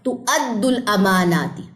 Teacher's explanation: اس کو تُؤَدُّل پڑھنا ہے، تو وا نہیں پڑھنی، حمزہ پڑھنا ہے.